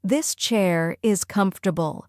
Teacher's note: Native speakers focus on stress in the first syllable.